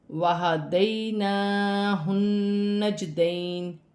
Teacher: نون مشدد میں غنہ بھی کیا جائے گا، وقف کی صورت میں زیر گر جائے گی اور نون ساکن ہو جائے گی